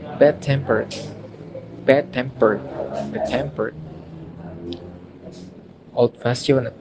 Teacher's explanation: for compound adjectives the stress is on the second part